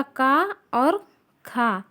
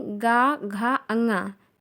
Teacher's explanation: इसमें देखते हैं अघोष में पहला वर्णमाला का पहला अक्षर, वर्णमाला व्यंजन का पहला अक्षर का और खा, का वर्ग का का और खा, ये अघोष है। जबकि गा, घा, अंगा तीसरा, चौथा, पांचवा अक्षर जो है ये सघोष है।